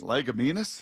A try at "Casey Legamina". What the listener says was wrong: No S. Casey Legamina.